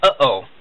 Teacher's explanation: The glottal stop is kind of like the pause in the English uh-oh. It's a distinct stop of the words that you're saying before you continue on.